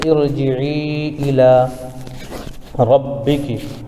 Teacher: یا ساکن کے بعد، یا ساکن سے پہلے عین کے نیچے زیر ہے تو یا مدہ ہوگا، اور حرف مد کے بعد یعنی یا مدہ کے بعد حمزہ دوسرے کلمے میں ہے اس لیے مد منفصل ہوگا، جیسے ارجعی الگ کلمہ ہے اور الی الگ کلمہ ہے، تو ارجعی الی ربکی، را پر زبر ہے اس لیے را کو پر پڑھیں گے، ربکی۔